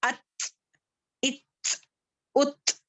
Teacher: ये हम्स letter है, थोड़ा-सा हम्स होगा, यानी कि थोड़ी-सी हमारी सांस बाहर जाएगी।